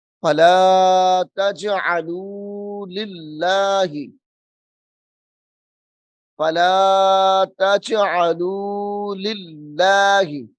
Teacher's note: اسم جلالت اللہ کا جو لام ہے اس کو ہم باریک کر کے پڑھ رہے ہیں